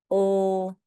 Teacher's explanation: we make that sound by lifting the tip of our tongue up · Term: L sound